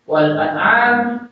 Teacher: An-nya itu jelas baca alifnya, am-nya itu jelas baca ainnya. Itu ainnya juga mat tabi'i.